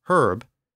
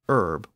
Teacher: British English pronounces H-E-R-B as herb, but American English pronounces it as herb without the H